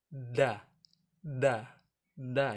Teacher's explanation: ujung lidah bertemu dengan pangkal gigi seri bagian atas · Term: huruf da